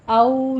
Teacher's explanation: औ दोनों होंठों को ना तमाम गोल करना है, वावलीन अदा करनी है